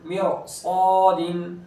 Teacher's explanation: ये मीम के नीचे ज़ेर है रा साकिन से पहले, लेकिन चूँकि उसके बाद फ़ौरन हुर्फ़ मुस्तालिया में से है तो फिर रा को पूर करेंगे